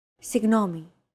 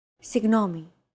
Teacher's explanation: this character isn't pronounced using an English G sound at all it's like a very soft continuous and loosely held G almost as if you're gargling but don't make it sound too throaty